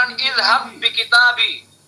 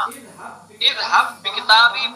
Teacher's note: با کا با میں ادغام ہو رہا ہے، ادغام مثلین